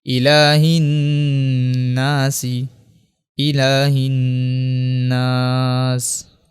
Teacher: ہا کو دوبارہ نون سے ملائیں گے، الف لام کو یہاں پہ دوبارہ نہیں پڑھیں گے، چونکہ نون کے اوپر جو ہے وہ تشدید ہے اس لیے یہاں پہ غنہ کریں گے